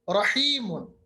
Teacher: रॉ पे जबर होगी, चाहे तशदीद हो या तशदीद के बगैर हो, रॉ को मोटा पढ़ा जाता है